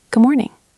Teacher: Usually, we don't explode the D.